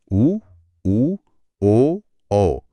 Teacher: वृत्त मतलब गोल। उ ओ औ इनका उच्चारण करते समय होठ गोल हो जाते हैं। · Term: वृत्तमुखी